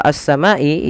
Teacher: pada F minasamaai di sini ada alif lam kita namakan dengan alif lam syamsiah yaitu alif lam yang dia tertulis tapi tidak dibaca lamnya